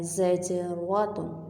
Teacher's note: عبرۃ، زجرۃ، زا کا فتحہ زبر ہم نے جیم کے ساتھ ملایا، جیم کے اوپر جزم ہے اور جیم ہے حرف قلقلہ اس لیے ہم نے اس کو ہلایا ہے۔ زج، را کے اوپر فتحہ ہے اس لیے ہم نے را کو پور پڑھنا ہے، موٹا پڑھنا ہے